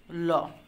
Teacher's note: জিভের দুই পাশ দিয়ে বাতাস বের হয়ে যায়, আর জিভের ডগা দন্তমূলকে স্পর্শ করে, জিভের দুই পাশ দিয়ে বাতাস বের হয়ে যায় বলে এগুলো হচ্ছে পার্শ্বিক ধ্বনি।